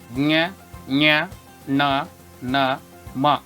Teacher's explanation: ಮೂಗಿನ ಸಹಾಯದಿಂದ ಉಚ್ಚರಿಸಲ್ಪಡುವ ಅಕ್ಷರಗಳೇ ಅನುನಾಸಿಕ ಅಕ್ಷರಗಳು